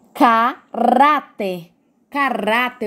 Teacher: Caráter, o rá, ele é forte. Então, é a penúltima sílaba que é a mais forte.